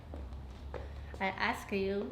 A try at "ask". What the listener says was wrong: Okay, ask, not aska.